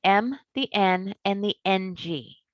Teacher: these sounds come through the nose there are three nasal sounds